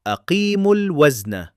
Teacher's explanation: We recite it as aqimul wazna, flowing directly from the short u sound into the lam without stretching the waw at all. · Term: Drop the elongation